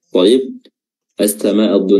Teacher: samaa terdapat Mad yang lebih dari dua harakat di sini nama madnya adalah mad wajib muttasil dikatakan wajib karena